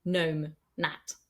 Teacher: the G is just there to look pretty. We don't pronounce it. It's pronounced N, gnome, gnat.